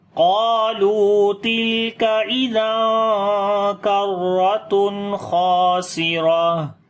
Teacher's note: تنوین کے بعد خا آ گیا تو یہاں پر اظہار حلقی کریں گے، نون کی آواز کو ظاہر کر کے پڑھیں گے، خا اور الف دونوں کو موٹا پڑھیں گے، را کو بھی موٹا پڑھیں گے، اور جب رکیں گے تو تا ہا بن جائے گی، دو پیش ختم ہو جائیں گی، اور یہاں پر صفت ہمس کریں گے، یعنی کہ سانس جاری کریں گے، اور آواز کے اندر پستی آئے گی، کمزوری۔